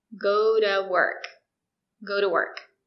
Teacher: And remember, when the letter T is between two vowels, we pronounce it as a fast D. And because to is not stressed, we say D.